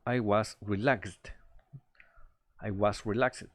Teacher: Lo que suena más fuerte es la sílaba lax.